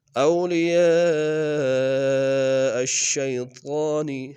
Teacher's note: اولیاء میں یا کے ساتھ الف مدہ کے اوپر مد متصل ہے، کم سے کم تین الف انداز میں کھینچیں گے۔ حمزہ کو شین کے سامنے آئیں گے، شین کو یا کے سامنے آئیں گے، طاء کو موٹا ادا کریں گے، طاء کے اوپر کھڑا زبر ہے، ایک انداز میں کھینچیں گے۔